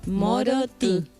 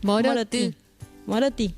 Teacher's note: La I sale el sonido un poquito por la nariz. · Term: nasalizada